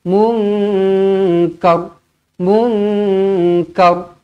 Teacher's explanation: kena baca dengan tebal kenapa Sebab huruf sebelumnya berbaris atas